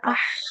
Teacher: Kalau ah itu dia di tengah tenggorokan kayak huruf H.